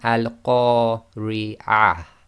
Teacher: because that TaaMarBooTah is at the end of the sentence, we will pronounce that as if it's a ha and it's sakin